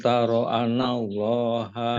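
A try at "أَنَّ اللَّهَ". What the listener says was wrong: Hanya panjangin Pak. Ada tasdid diingat Pak. Itu gunah Pak. Anallah.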